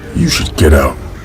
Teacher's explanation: The first T is surrounded by vowels, so it will be a flap T. A flap T just sounds like a D.